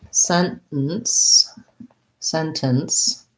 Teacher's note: use a stop t in the word sentence um yes uh i tend to do that so sentence sentence